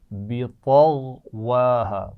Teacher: پہلے غین کی آواز پڑھیے, بعد میں واو کے لیے ہونٹوں کو گول کیجیے